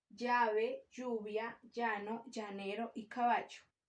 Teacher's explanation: el sonido consonántico que se pronuncia acercando el dorso de la lengua al paladar